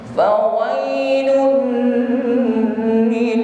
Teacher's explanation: Fawailul lil, tidak boleh berlama-lama. Nah, karena di situ ada idgham bila gunah, masuk pada huruf lam, tidak boleh berdengung. Fawailul lil, tidak boleh ya, bila gunah, masuk tanpa ada dengung.